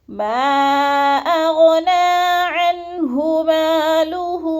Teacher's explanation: عن پہ اظہار ہے، غنہ نہیں کریں گے